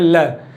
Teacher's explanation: जब हम ल का उच्चारण करेंगे, ल, तो हमारा जो ल का उच्चारण करेंगे तो अवरोध उत्पन्न करेगी जीभ और श्वास वायु साइड से बगल से निकल जाती है, तो पार्श्विक व्यंजन होगा हमारा ल।